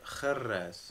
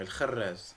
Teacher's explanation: il y a le R donc raclé au fond de la gorge et le R roulé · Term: cumul des deux R